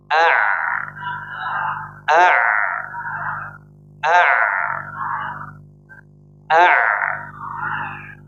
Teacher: Jadi mengalirnya sebagian suara ketika menggunakan huruf ain disebabkan rujuk, kembalinya lisan mismar, kembalinya epiku ke sini atau ini ya, sebagai ini bisa misbar ilal khalf, ke belakang ya.